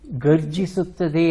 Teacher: ಗರ್ಜಿಸುತ್ತದೆ ಅನ್ನೋದೇ ಸರಿಯಾದದ್ದು ಮಹಾಪ್ರಾಣ ಘ ಬರುವುದಿಲ್ಲ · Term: ಅಲ್ಪಪ್ರಾಣ